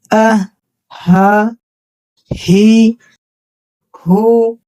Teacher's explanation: ہا کا مخرج ہے اقصائے حلق، یعنی حلق کا سب سے آخری حصہ جو سینے کی طرف ہوتا ہے۔ جب آپ بغیر کسی دباؤ کے بالکل نیچے سینے کی طرف سے سانس کو باہر نکالتے ہیں تو ہا ادا ہوتا ہے، جیسے ہا، ہی، ہو۔